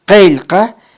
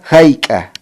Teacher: la grafía de doble C escrito en Qeilqa es posvelar. Se articula en el postdorso de la lengua, mientras la grafía de doble C escrito en Hayqa para decir cuánto se articula en el velo del paladar, acompañada con una glotal. Entonces, hay una diferencia entre Qa oclusivo posvelar y Qa velar glotal, o sea, se pronuncia en diferentes puntos de articulación.